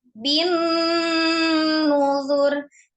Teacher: Ada tasdid nun, disempurnakan dulu gunnahnya.